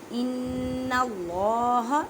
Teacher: نون مشدد ہے, گنہ کریں. گننے کا مطلب ہے آواز کو ناک میں لے کے جانا ایک الف کی مقدار میں